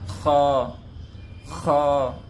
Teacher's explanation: خا کو منہ گول کر کے پڑھے، اسے کھا ایسا بالکل بھی نہ پڑھے